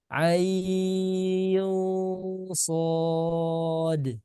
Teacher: Jadi tidak ain enggak, tapi dinaikkan pangkal lidahnya sehingga membentuk suara yang tebal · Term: ikhfa tebal